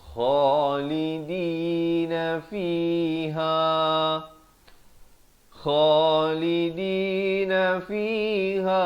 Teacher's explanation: kha di hujung kerongkong